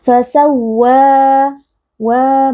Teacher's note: mad tabi'i karena ada alif sebelumnya berharakat fathah dibaca panjang 2 harakat